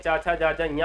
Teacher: चा वर्ग में चा छा जा जा या का उच्चारण स्थान तालु है